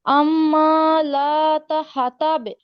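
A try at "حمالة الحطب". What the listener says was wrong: আচ্ছা আমরা দেখি, লাতা এই লামের মধ্যে হচ্ছে আমরা টান দিব না, দ্রুত বলবো।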